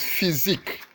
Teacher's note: physique has its stress on the second syllable